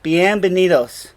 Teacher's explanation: Notice how the V and the B sound the same. Bienvenidos.